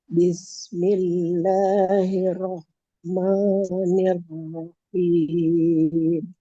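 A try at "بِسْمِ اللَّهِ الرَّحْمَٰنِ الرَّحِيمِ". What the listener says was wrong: Ya, bismillahnya ini belum berubah juga nih. Double R yang pertama aja, itu dia. Bismillahirrahmanirrahim. Yang kedua, roknya udah bagus. Yang pertama, double R-nya setengah.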